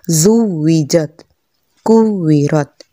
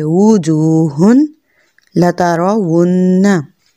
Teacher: अब इसको जुविजत नहीं पढ़ना, यानी ये कि दांत होंठ से नहीं लगाने, दोनों होंठों को गोल करना है, जुविजत, कुविरत। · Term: वाव